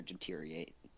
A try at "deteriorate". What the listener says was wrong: Deteriorate, not deteriorate. There's R's in there.